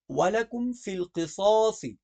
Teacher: قصاصی کی دونوں ساد موٹی پڑھی جائیں گی